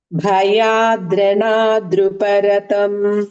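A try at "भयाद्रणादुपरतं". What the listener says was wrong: Dhru is not there. Dhuparatam. Bhayadranaduparatam.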